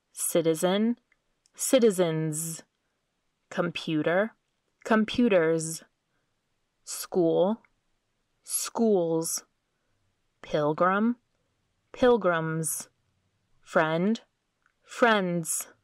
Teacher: the z sound also follows voiced consonants